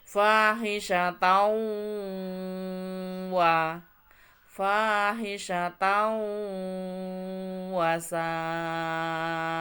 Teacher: Ada fathah tanwin bertemu dengan wawu ya yang bergaris bawah. Maka dia disebut dengan bacaan idgham bi gunnah. Memasukkan huruf dengan mendengung.